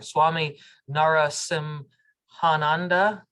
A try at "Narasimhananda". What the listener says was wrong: Yeah, it's pronounced as one word, Narasimhananda. There's no break.